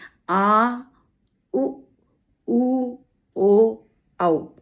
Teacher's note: अब आप जब अपनी जीभ पर ध्यान लगाएंगे तो आपको समझ में आएगा कि जो पीछे वाला हिस्सा है वो सक्रिय हो रहा है। तो इसलिए इनको पश्च स्वर कहते हैं।